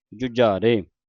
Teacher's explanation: ਜਜ ਨੂੰ ਔਂਕੜ ਉੱਤੇ ਅਧਕ ਲੱਗਾ ਕੱਸ ਕੇ ਉਚਾਰਨ ਕਰਨਾ